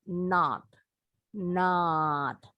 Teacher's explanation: ini bunyinya agak bulet ya jadi Mereka bilangnya nol nol bulat kalau orang Amerika not not agak lebar nggak monyong tapi mulutnya lebar kalau Inggris agak monyong not not sama juga dengan yang ini